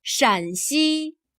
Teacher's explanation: Here 山 has a high level tone. 山西 Here 陕 has a lower, falling tone.